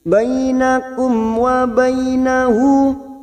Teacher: Kita uraikan dari kata ka'allam karena di sini sekarang kita wasol, maka kita uraikan dari kata bainakum wa bainahu mim sukun bertemu wawu idhar safawi dibaca jelas tanpa mendengung